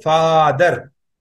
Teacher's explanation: the A here is it is coming as a long vowel, represented by A bar in IAST transliteration